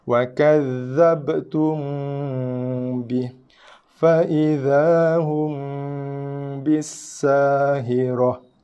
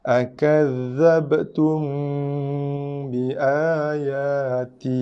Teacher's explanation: Mim bertemu dengan ba, bibir tutup, mulut tutup, tapi sekadar bersentuhan dengan sentuhan yang lembut saja. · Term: irfa' syafawi